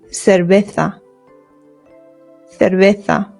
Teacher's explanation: the V's in Spanish make a very light B sound · Your lips just touch very lightly when you make the V sound.